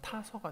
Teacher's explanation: 가 플러스 아에서 가아가 돼야 되는데 하나가 떨어져서 가가 된 겁니다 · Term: 모음 탈락